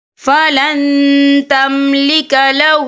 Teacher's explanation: نون ساکن کی آواز کو ناک میں چھپائیں گے